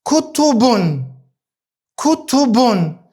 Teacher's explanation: Mos të harrojmë se ne tenvinin nuk e zgjasim. Ashtu sikurse nuk e zgjasnim pra tenvinin en in, ashtu nuk e zgjasim edhe tenvinin un. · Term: tenvini un